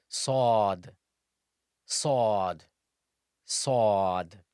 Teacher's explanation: Sod is pronounced from the tip of the tongue when it lies on the bottom incisors. And that's how the safir or the whistle attribute comes out.